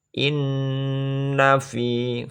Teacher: Bacaannya berdengung. Inna fi dibaca mat tabi'i panjang, satu alif atau dua harokat, dua ketukan